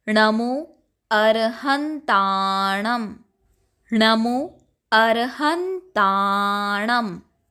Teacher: अंतिम में जो अनुस्वार है उसका उच्चारण म और ङ ये दोनों कर सकते हैं